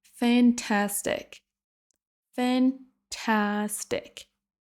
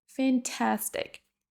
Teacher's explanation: Donc c'est vraiment la deuxième syllabe qui sera prononcée plus longue et plus fort que les autres.